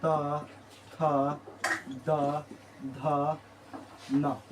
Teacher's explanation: दंत से बोला जाता है त वर्ग